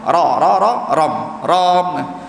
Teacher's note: Ra sifat dia takrir, iaitu yang mana bergetak, 2 kali getak saja. Ram. Tak boleh lebih sangat.